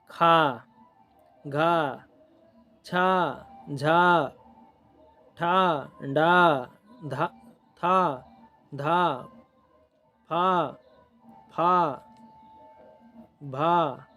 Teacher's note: इनके उच्चारण में हवा की अधिक मात्रा तथा हवा अधिक शक्ति के साथ बाहर आती है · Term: महाप्राण